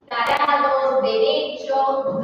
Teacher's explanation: And it is important because in Spanish we produce tarados, derecho, we use it with the teeth. We put our mouth and our tongue in the teeth. So it's dental in Spanish. But in English, it's alveolar.